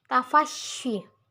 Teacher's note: tafasyi meratakan angin di rongga mulut